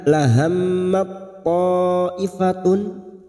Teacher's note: selama dua atau Har bertemunya huruf ta Sukun dan huruf th memasukkan dua huruf yang sejenis makhrajnya disebut dengan bacaan Idam mutajanisain dengan Menghilangkan sifat Hames pada huruf Ta